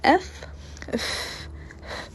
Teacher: if you say F you don't feel any vibration this is not considered as a voiced uh sound second place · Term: voiceless